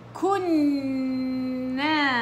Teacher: النون المشددة غنة أكمل ما تكون كام تقريبا أربعة إلى خمس حركات. في قراءة كل الغنن بيجيبوهم اثنين حركة بس التحقيق لا، أربعة إلى خمس حركات.